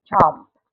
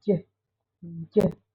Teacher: post-alveolar, the tongue touches the back of the alveolar ridge. The air is then released with friction. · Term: affricates